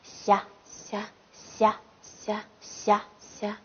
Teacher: 好，大家好，今天我们开始学习一下藏语文辅音字母的第6组。好，第6组是霞地，霞地，霞，霞，霞，霞。好，那么它的发音部位是？发音部位舌面前。舌面前。对，霞，霞，霞，霞。好，那么它的发音方法呢？ 发音方法是轻擦音。对，轻擦音。